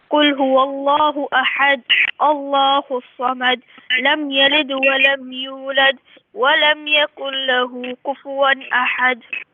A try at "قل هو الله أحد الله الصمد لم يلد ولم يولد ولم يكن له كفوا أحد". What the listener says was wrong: If you can only pay attention to the qalqala on the letter dal. قل هو الله أحد الله الصمد لم يلد ولم يولد ولم يكن له كفوا أحد.